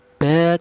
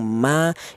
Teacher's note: Tapi walaupun sama-sama keluarnya berasal dari kedua bibir, akan tetapi dibedakan ya. Untuk huruf mim dan huruf ba ini dihasilkan dari kedua bibir yang rapat. · Untuk huruf mim dan huruf ba ini dihasilkan dari kedua bibir yang rapat. Kita bilang ba, kita bilang ma, itu kedua bibir kita rapat dulu.